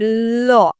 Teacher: জীবের দুই সাইড দিয়ে মনে হচ্ছে বায়ু বেরিয়ে আছে